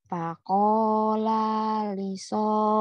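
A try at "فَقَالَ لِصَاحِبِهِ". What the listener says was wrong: Lanya pendek. Faqala Faqala lisahibihi wa huwa yuhawiruhu.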